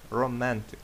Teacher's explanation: Наголос має падати на другий склад.